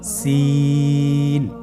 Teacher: সিন হরফটি উচ্চারণ ক্ষেত্রে অবশ্যই তিন আলিফ টেনে পড়তে হবে। সিন হরফটি বারিক হরফ পাতলা করে উচ্চারণ করতে হবে